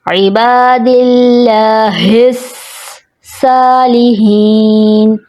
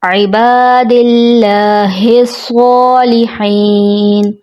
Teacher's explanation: درست ادائیگی عبادل. لاہ الصالحین، صاد کی جگہ سین کی ادائیگی آ جاتی ہے، جیسے عباد اللہ الصالحین، جو درست ادائیگی نہیں ہوتی.